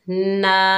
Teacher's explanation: नून के ऊपर खड़ा ज़बर है, 1 अलिफ की मिकदार खींच कर पढ़ेंगे